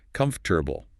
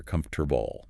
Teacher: Those middle vowels often become just a weak, lazy sound, more like comfortable, or even faster, comfortable. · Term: schwa